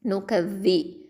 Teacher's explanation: இது தரஃபுல் லிசான் நுனி நாவு எழுத்து. நுனி நாவு மேல் பற்களுக்கு கீழே வச்சு சொல்லணும்.